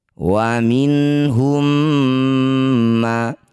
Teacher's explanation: bunyi mim pertama masukkan pada mim kedua, bibir rapat dengung dua harokat. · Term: idgham mimmi